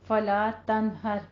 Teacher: یہاں پہ نون کا غنہ نہیں کرنا, اظہار ہلکی کرنا ہے کیونکہ آگے حروف ہلکی میں سے ہا آ رہا ہے